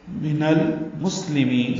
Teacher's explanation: سین ساکن پہ حمز ہے یعنی سانس جاری رہتی ہے اس کے پڑھنے میں. من المسلمین، لام باریک ہے اور میم کو لمبا کریں گے.